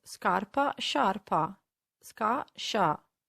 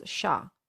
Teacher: As you can see, they only differ for the letter I, which makes a huge difference because the I tells us that instead of a hard sound ska, we need to soften the sound and pronounce sha